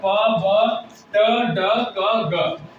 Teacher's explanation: तो जो plosive sound है इसमें हम लोग का क्या होता है कि सडनली एयर रिलीज होता है बोलने में